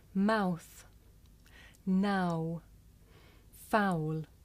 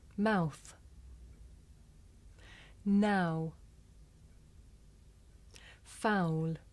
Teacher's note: this is a diphthong a double vowel sound the shape the mouth makes changes from the beginning of the sound to the end